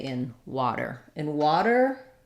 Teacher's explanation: in water it's a flap T it's the same as how we say D's in the middle we also use a flap there so you can think of